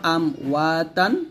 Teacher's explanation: এই বাটা আমরা দুই ঠোঁটের ভেজা অংশ থেকে মিলাবো, বা পাতলা উচ্চারণ করবো, আবে ওয়া বান। আবার দুই ঠোঁটের শুকনা অংশ হইতে মিম উচ্চারণ করতে হবে। এখানে দেখুন চিত্রতে দেওয়া সুন্দর করে, মিম এরকম ভাবে উচ্চারণ করবো, আম ওয়াতান।